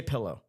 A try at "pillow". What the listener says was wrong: Like P E L L O N.